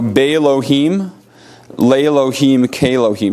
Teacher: before the prefixes, the initial aleph is lost in pronunciation